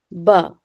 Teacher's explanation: जब दोनों होठों का गीला हिस्सा जरा जोर से मिलकर अलग हो जाता है तो हर्फ ब अदा होता है